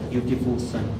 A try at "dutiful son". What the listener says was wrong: Dutiful, not beautiful, yeah? Dutiful son. The way you express yourself or pronounce the word is very important.